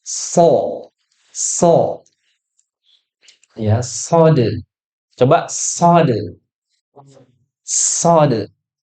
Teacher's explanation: Sofir itu apa? Sofir itu adalah desis. Ya, jadi sebelum mengucapkan itu ada desisan.